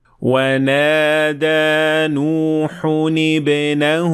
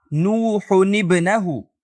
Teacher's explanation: یہاں ہم نے کہا نوح ابنہ، تو ہم نے لفظ نوح کے آخر میں موجود تنوین کو کسرہ دے دیا